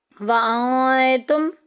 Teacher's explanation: نون ساکن کے بعد تا، اخفا کے خاندان میں، چھپا کے پڑھیں گے